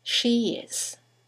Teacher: there is a semi-vowel, y, that links the vowel at the end of she to the vowel at the beginning of is